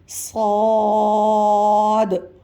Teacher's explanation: سامنے کے دانت اور نیچے والے دانت آپس میں ملائیں گے، پھر سیٹی اور سختی سے ادا کریں گے۔ صاد برابر میں آپ دیکھیے مد ہے تو کھینچیں گے، اور برابر میں دال لکھا ہوا ہے تو آخر میں ادائیگی کرتے وقت دال کی آواز بھی آنی چاہیے۔ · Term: سیٹی سختی کا حرف